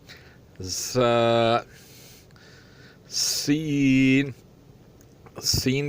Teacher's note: रा, सख्त और पतला, यानी थोड़ी सी सीटी सी जैसी आवाज़ निकले तो ये बहुत अच्छा है। सीन, सीन भी सख्त और पतला होता है, इसमें भी थोड़ी सीटी जैसी आवाज़ निकलनी चाहिए